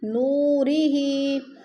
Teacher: واو ساکن سے پہلے نون کے اوپر پیش ہے تو ادھر واو مدہ ہو رہا ہے